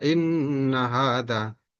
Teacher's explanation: Dibaca bertasdid karena nunnya bertasdid. Dibaca dengung karena nun bertasdid. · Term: gunnah musyaddadah